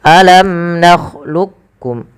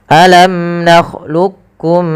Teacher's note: ada dua ada dua pendapat yang pertama dengan Idam Kamil ya memasukkan langsung huruf Kaf kepada huruf kafnya secara utuh